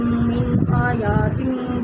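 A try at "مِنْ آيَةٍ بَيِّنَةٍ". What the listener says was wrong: آیاتم، یا پر تو کھڑی زبر نہیں ہے نا.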